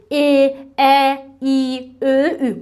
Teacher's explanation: İncə saytları tələffüz edəndə dil o üfuqi xətt üzrə sanki bir qədər önə gəlir və səs incə çıxır. Dilin önündə yaranır.